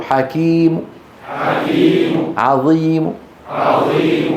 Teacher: الروم قاعده عند الوقف بالروم على الحرف المنون المضموم او المكسور فاننا نحذف التنوين هذا مهم ونقف ببعض الضمه في المضموم وببعض الكسره في المكسور